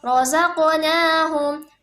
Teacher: qalqalah sugra dalam pembacaan qalqalahnya itu pantulannya itu tidak terlalu kuat